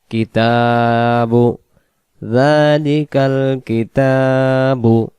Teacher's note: তাই এর উপর খারা জবর, এই জন্য এখানে 1 আলিফ টেনে পড়বো